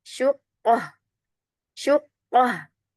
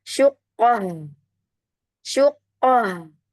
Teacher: Huruf H itu, ya, itu punya sifat rokhwah, punya sifat hamas juga. Jadi jangan buru-buru terhenti, ya.